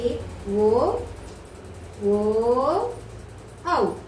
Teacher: అంటే పెదవుల నుంచి ఉద్భవించిన పుట్టుకొచ్చిన అక్షరాలని కంఠోక్షాలు అని చెప్పేసి అంటారు అంటే కంఠం నుంచి ఓష్య భాగం పెదవుల నుంచి రెండు భాగాల నుంచి పుట్టుకొచ్చిన అక్షరాలు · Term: కంఠోష్ట్యాలు